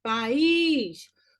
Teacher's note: País, o is é o mais forte.